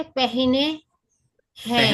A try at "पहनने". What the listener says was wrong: पहनने, पहनने, पहनने, पहनने, पहनने. Both na is clear, but third na is slightly small. पहनने, पहनने, पहनने